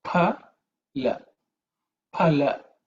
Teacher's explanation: There are some who pronounce it as phala with an F sound, but the real Sanskrit pronunciation is pa. Okay, pa with an extra air.